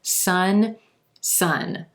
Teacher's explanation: the vowel in both of these words is the UH as in plum